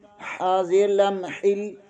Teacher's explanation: حاضر کو لام کے ساتھ ملائیں گے، لام مشدد ہے، اسے 2 بار پڑھیں گے